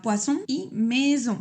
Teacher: esa s la pronuncié un poco como una z vibrada